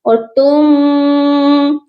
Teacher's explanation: اور تم، یہاں پر بھی آپ دیکھ لیجئے کہ دو میم اکٹھے آ گئے ہیں تو ساکن والے کو آپ مت پڑھیے گا، تا کو میم مشدد کے ساتھ ملائیں گے اور غنہ بھی کریں گے